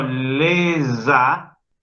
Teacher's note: en la palabra le, la S no suena. Pero cuando digo lesa, estoy haciendo que la S recupere su sonido original. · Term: liaison